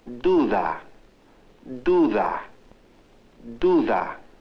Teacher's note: Now notice that the initial D is pronounced da. The middle D is pronounced differently, like th. When the da sound occurs between vowels, it is pronounced th.